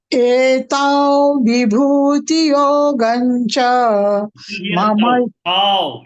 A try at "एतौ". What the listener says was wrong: Tau, not ta. Etau vibhutim.